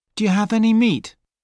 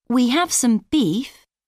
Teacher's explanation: In sentences, we use weak sounds in some, any.